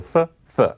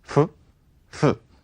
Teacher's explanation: whereas standard English happens to have th, Black English has f.